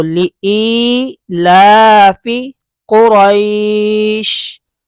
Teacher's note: یہاں پر مد لین عارض ہو جائے گا، وقف کی وجہ سے شین ساکن ہو جائے گا۔ اور پھر ہم نے قاعدہ سیکھا تھا، اگر حروف لین کے بعد عارضی سکون ہو، یعنی وقف کی وجہ سے کوئی حرف ساکن ہو جائے یا کسی حرف کو ساکن کرنا پڑ جائے، تو وہاں پر مد لین عارض ہوگا یا پھر مد عارض ہوگا۔